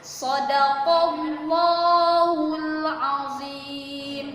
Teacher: Shadaqallah, ada huruf qaf, huruf hijaiyah yang berharokat fathah bertemu dengan lafaz Allah, maka dibacanya tebal, disebut tafkhim.